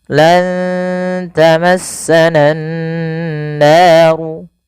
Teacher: dengan menahan suara nun dan memasukkan ke rongga hidung kita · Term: gunnah